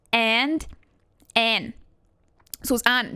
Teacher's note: they forget the d entirely